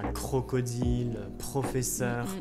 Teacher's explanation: juste après certaines consonnes comme le que, le te et le p, où là le R est plus fort comme, je sais pas, crocodile, professeur, mais sinon la plupart du temps il reste assez léger.